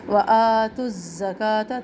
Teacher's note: تا کو زا سے ملانا ہے, زا میں سختی بھی ہے. کاف کے اوپر کھڑا زبر اور یہاں تا گول تا کے اوپر ہم ٹھہر رہے ہیں, تو وآتوا الزکاۃ.